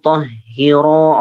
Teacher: Roknya panjang, dua. Tahhiro, roknya 2 harokat.